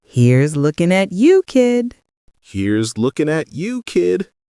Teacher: Notice the rhythm. Small rise on here's, smooth glide to looking, short pause, gentle tag on kid.